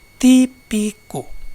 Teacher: palavra esdrúxula ou proparoxítona, palavra cuja antepenúltima sílaba é tônica